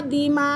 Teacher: बड़ा मद आ रहा है क्योंकि हमज़ा एक ही कलमे के अंदर है। ठीक है, मद के फ़ौरन बाद हमज़ा अपनी असली हालत में है।